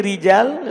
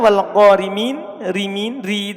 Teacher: Ketika ro-nya berkasro dan dia dibaca sambung, maka dia dibaca tipis.